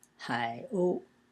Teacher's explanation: Hai is pronounced in the third tone, and o is in the first tone